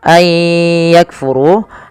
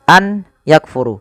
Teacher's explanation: nunnya dianggap tidak ada langsung dibaca ke ya maka sambil dimasukkan ke ya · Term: idgam bigh bunah